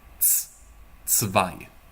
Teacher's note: this is not pronounced like Z in German, as it is in English. You would say it like TS.